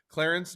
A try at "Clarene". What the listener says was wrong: you put an extra C in there, but I'm gonna still like you. It's Clarene.